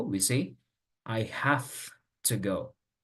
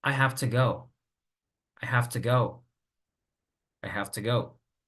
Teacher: En este caso, por ejemplo, la T viene siendo más fuerte que la V porque la T es un sonido sin voz y la V tiene voz. Entonces, la V pasa a un sonido sin voz, que sería la F. · the sound V en have puede sonar más como una F debido a la influencia de la T que está en la palabra to, porque están cercanos, es un sonido cercano. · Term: sonido de asimilación, asimilación